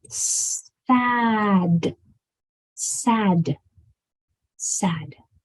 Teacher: sure that your mouth is big and wide and round and the sound of this D is very short and quick